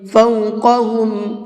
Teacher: یہاں پر بھی قاف کو منہ بھر کے پڑھیں گے۔ قاف تو جہاں پر بھی آئے گا اس کو منہ بھر کے ہی پڑھا جاتا ہے۔